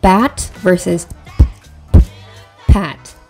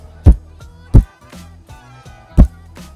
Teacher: both have the same manners of articulation and places of articulation they're both bilabial stops they only differ in that b or the b sound is voiced and the sound is voiceless